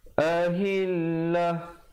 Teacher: Ta marbutah bila kita berhenti dia betulkan menjadi ha